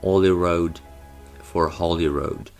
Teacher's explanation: word initial H deletion. So there is no H